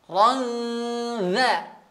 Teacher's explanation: ra-nya tebal, kemudian di sini ada dengung, dengungnya tipis